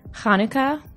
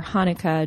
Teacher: you can say it either Hanukkah with that throaty sound in the beginning or Hanukkah just with an H